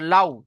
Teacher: ওয়াউলিনকে সর্বদা নরম আওয়াজে তাড়াতাড়ি পড়তে হবে।